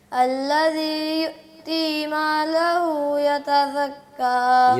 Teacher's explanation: مالہ پہ جو ہے نا اس کو بھی لمبا نہیں کرنا. آپ جو مد اصلی ہے نا اس کو زیادہ لمبا کر دیتے ہیں، ٹھیک ہے، صرف ایک الف کرنا ہوتا ہے.